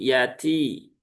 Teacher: Kemudian ta dia di ujung lidah dengan gusi ya. Dan dia ee huruf ta itu punya sifat hames seperti huruf kaf ya.